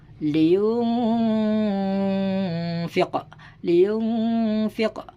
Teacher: Jadi nun matinya itu didengungkan serta samar